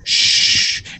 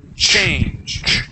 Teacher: the ch, it's a punch of air